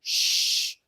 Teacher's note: So sh does not vibrate.